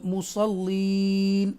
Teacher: اگر آپ سٹے کریں گے تو یہ نون فتح کے ساتھ، نون زبر کے ساتھ جو ہے وہ نون ساکنہ میں چینج ہو جائے گا، مصلین ایسے ادا کریں گے جب رکیں گے.